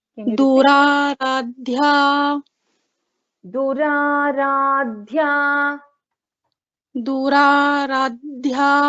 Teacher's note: So this is Ra is Dirgha, and then we have Dha Mahaprana and Ya Dirgha again